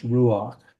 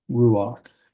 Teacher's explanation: It is actually a furtive patak, so it's ruach. You pronounce the A vowel before you get to the chet